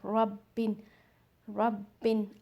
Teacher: मुशद्दद means बा को हम 2 टाइम्स पढ़ रहे हैं